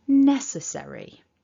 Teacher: And remember, it's 4 syllables. We stress the first one.